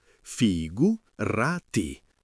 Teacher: Figurati si dice con l'accento sulla seconda sillaba, figurati. E nella parlata veloce spesso si sente figurai con la te che si assorbe un po', ma l'importante è mantenere quel senso di immediatezza.